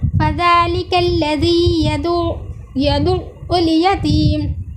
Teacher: फ़ज़ालिकल्लज़ी में ज़ाल का मखरज जैसे हमने आपको बताया सामने के दो दांतों की किनारे से लगाकर अदा किया गया है।